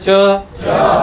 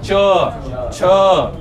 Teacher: अशी पालती होऊन लागली ना च आणि बरोबर त्या टाळूकडेच गेली जीभ